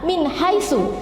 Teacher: nun mati bertemu dengan ha, min haisu, jadi harus jelas membacanya, tidak boleh menengung